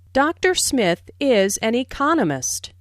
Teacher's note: notice the stress on economist this content word has new information so it is emphasized there are four syllables in Economist